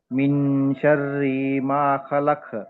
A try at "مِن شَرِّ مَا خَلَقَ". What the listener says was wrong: షర్రీ దీర్ఘం తీయకూడదు. మీ షర్రి మా ఖలక్.